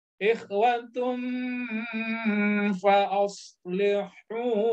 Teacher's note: dhamma tanwin ketemu huruf fa, maka dia ikhfa. Ikhfa artinya apa? Sengau.